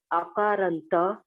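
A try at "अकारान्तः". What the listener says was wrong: Akarantaha, Visarga must be said. Akarantaha, Pullingaha, Acharya, Shabda.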